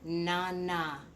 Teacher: Notice how my tongue is going on the back of my teeth